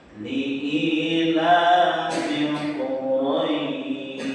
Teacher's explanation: Li'ilafil Quraisy salah, bukan pakai sin, tapi pakai shin. Jadi hati-hati di akhir ayat 1 itu hurufnya shin bukan sin